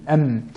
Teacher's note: Le waw en arrondissant les lèvres, le ba en collant les lèvres seulement, sans nasillement du tout, et la lettre mim en collant les lèvres, mais avec le nasillement